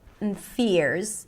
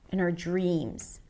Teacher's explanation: and reduces to N, and fears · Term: reduced